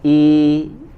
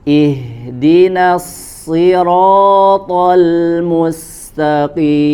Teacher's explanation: Ya, jangan dibaca tebal, jangan i karena dia juga kasroh, maka sempurnakan harokatnya ya, agak sedikit diturunkan rahang bagian bawah i ya. Kemudian ya, pertahankan suaranya dalam kondisi bacaan yang tipis